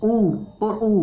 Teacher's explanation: जब तक आप होठों को गोल नहीं करोगे, जब तक ऊ बोल ही नहीं पाओगे।